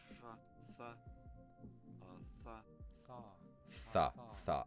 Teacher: I think that's the voiceless dental fricative theta.